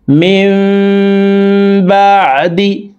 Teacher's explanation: আহদাল্লাহি, আল্লাযীনা ইয়ানকুদুনা আহদাল্লাহি মিন বাদি, মিম এখানে ইকলাব গুন্না, নুন সাকিনের পরে ইকলাবের হরফ বা একটি আসলে এই ছোট্ট মিম দ্বারা পরিবর্তন করিয়া গুন্নার সহিত পড়িতে হয়